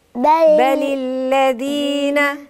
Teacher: بل مش بطلع ربع لساني، ده طرف اللسان